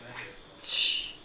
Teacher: you say t, but in producing this, you don't release the t. You go straight into sh. So you begin t, but you end sh.